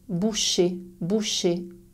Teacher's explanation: Mais pour bien saisir la différence, place ta main sur ta gorge. Quand tu prononces le verbe boucher, fermer la bouteille, il n'y a pas de vibration. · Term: son ch